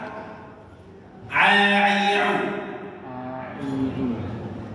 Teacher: Huruf ain makhrajnya itu di tengah tenggorokan.